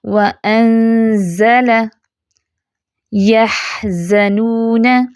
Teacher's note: زا میں buzzing sound ہے